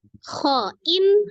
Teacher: Jadi tanwin, nun sukun atau tanwin bertemu dengan huruf kho itu juga izhar halqi, karena huruf kho juga termasuk salah satu huruf halqi atau tenggorokan, tepatnya tenggorokan bagian atas. Maka dibaca izhar halqi, jelas.